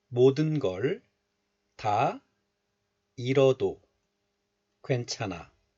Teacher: the 히 sound, H sound is just dropped. And then the consonant 리을 is followed by a vowel of the next letter. So in this case, liaison or linking occurs.